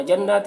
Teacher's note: نون مشدد غنہ ہوگا اور کھڑا زبر ہے تو ایک الف کے برابر کھینچیں گے بھی